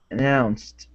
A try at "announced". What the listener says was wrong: Okay, nice job.